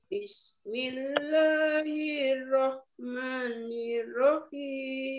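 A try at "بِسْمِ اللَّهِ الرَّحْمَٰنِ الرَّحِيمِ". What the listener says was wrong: Nah, maknya kurang panjang, hati-hati, Bu.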